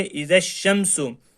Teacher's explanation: حمزہ زیر ای، زال شین زبر زش، ایزش، شین میم زبر شم، ایزش شم، سین پیش سو، ایزش شم سو۔ کیونکہ شین پہ تشدید ہے اس لیے ہم زال کو شین سے ملائیں گے، تو ہم اس کو پڑھیں گے ایزش شمسو، اور یہاں یہ حروف شمسی ہے اس لیے الف لام دونوں نہیں پڑھے گئے۔